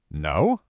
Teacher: By using that rising tone, B isn't just delivering a negative fact.